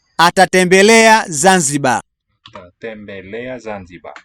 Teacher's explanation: it sounds like the R is not really sounded